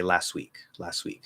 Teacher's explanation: the t doesn't have to connect to w um i can just connect the s to the w